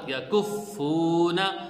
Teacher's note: اب دیکھیں اس میں فا کو ہم نے سختی سے پڑھا ہے، کف فلا ہا، یا زبر یا، کاف فا پیش کف، یا کف، فا واو پیش فو، یا کف فو، نون زبرنا، یا کفونا۔ اب اس میں ہم نے فا کو سختی سے پڑھا ہے اور ڈبل پڑھا ہے